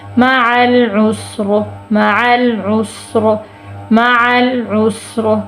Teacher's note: ری، وقف کی صورت میں معل عسر، معل عسر، معل عسر، کیونکہ را ساکن کریں گے وقف کی صورت میں، پچھلا حرف بھی ساکن اس سے پچھلے پیش ہے تو ہم را کو پر کر کے پڑھیں گے